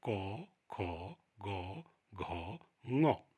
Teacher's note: इन वर्णों का उच्चारण कंठ से होता है और इसके उच्चारण में जीभ का जो पिछला भाग है वो गले को छूता है।